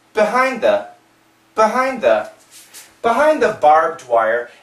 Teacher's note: the D and the TH, they're similar sounds, D, D, D, D, they go together and we just keep the TH. Behind the barbed wire, and if you listen carefully, you can hear the D, okay?